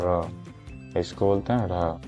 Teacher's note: जीभ झटके से नीचे आती है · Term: उत्क्षेपित